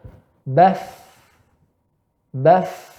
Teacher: Pita suara tidak rapat, terbuka. Kedua, ya, tidak bergetar. Ketiga, banyak udara yang keluar. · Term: huruf fa